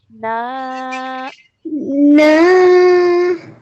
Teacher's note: noon with a fatha followed by a alif madda, stretching for 2 counts.